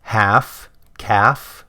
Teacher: There's no L sound in those words